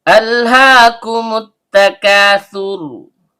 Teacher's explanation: Kaf, pangkal lidah naik ke langit-langit di atasnya. · Ha, tenggorokan bagian bawah. Karena haknya berharokat fathah berdiri atau fathah panjang, maka terjadi hukum bacaan mad tabi'i. Panjangnya 2 harokat dan setiap panjang keluar dari rongga mulut. · Terdapat hamzah kotok atau hamzah berbentuk alif yang keluar dari tenggorokan bagian bawah.